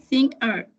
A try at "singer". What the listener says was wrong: Singer, poquito más pegada a las dos, pero súper bien.